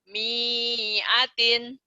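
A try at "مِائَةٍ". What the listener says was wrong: Miatin pendek. Miatin. Iya, miatin.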